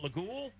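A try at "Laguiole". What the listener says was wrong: Layol. you pronounce it Layol. You don't say the J on it. Layol.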